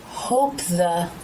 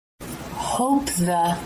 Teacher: The lips come together to make the P, and as they part, the tongue tip comes through the teeth to make the TH.